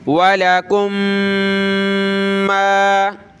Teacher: لها ما کسبت وَلَكُمْ مَا، دیکھیں دو میم ایک جگہ جمع ہو گئے ہیں، دونوں کو پلس کر کے ایک میم پڑھیں گے اور ناک میں آواز پیدا کریں گے